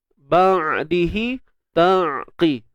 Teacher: Jadi huruf ain ni dia bersifat tawassut. Makna kata suara kita ni tidak terlalu tertahan dan tidak terlepas. Dia tengah-tengah.